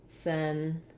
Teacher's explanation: Letter T says the ch sound, so you might write it like century. That we have that forced, that plosive ch sound